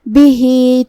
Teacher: مد صلہ صغرا، ہم اپنی آواز 2 مد کے برابر لمبی کریں گے.